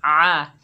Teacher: आइन के ऊपर ज़बर है, बगैर खंचे पढ़ेंगे आ। आइन को हलक के दरमियान से अदा करेंगे